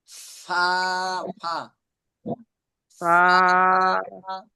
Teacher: নিচে ঠোঁটের পেট, উপরে দুই দাঁত লাগবে, নিচের ঠোঁটের পেট, উপরে 2 দাঁত লাগবে, তাহলে ফা উচ্চারণ হবে।